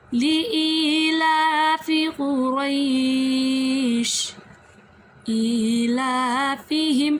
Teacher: ای کھڑا زیر، لا کھڑا زبر، ان دونوں کو لمبا کریں گے